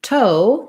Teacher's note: o by itself but rather oh your jaw closes and and your tongue lifts and relaxes as you say the o diphthong